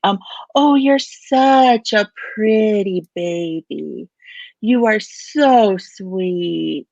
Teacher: has sort of an overall higher pitch when we talk our voice tends to go up